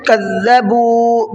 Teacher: کذبوا، با کو بھی کھینچنا ہے، یہاں پر واو مدہ کا قاعدہ ہے